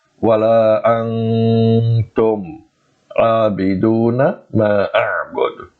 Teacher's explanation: That is to prolong the joining sound approximately 2 times its original length, or prolong the noon sound 2 times its original length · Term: gunna